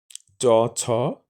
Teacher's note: তালব্য বা শক্ততালুর বিভিন্ন অংশে জিহবা স্পর্শ করে এই তালব্য ধ্বনি উচ্চারিত হয়